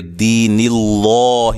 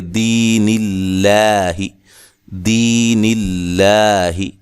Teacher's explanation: اب ہم بات کرتے ہیں کہ باریک کب پڑھا جائے گا لام. لکھا ہے کہ لفظ اللہ یا اللہم کے لام سے پہلے اگر زیر آ جائے تو اس لام کو باریک پڑھیں گے